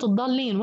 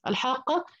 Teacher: الشدة أول حرف ساكن وجاء قبلها حرف المد، فبالتالي حضطر أمدها ست حركات